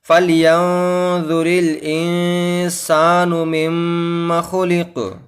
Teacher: میم مشدد آیا ہے تو میم مشدد پر بھی ہمیں گنہ کرنا ہوتا ہے، میم اس طرح۔